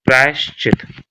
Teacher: विसर्ग के स्थान पर तालू सा का प्रयोग हो जाता है